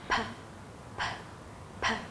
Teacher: This is a voiceless sound, which means the vocal cords are not engaged when making this sound. The vocal cords in your throat are not used. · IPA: /p/